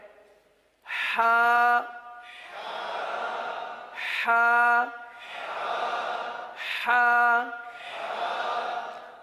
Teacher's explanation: اب اس حرف کا مخرج کیا ہے؟ حلق کا درمیان, وسط حلق